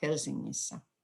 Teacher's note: It's a Swedish word originally, so the e remains an e at the end, but the nk combination is weakened to eng before the ending